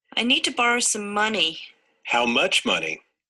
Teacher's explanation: the prominence in this case is only one in the unit and it shifts from the old information money to the new information much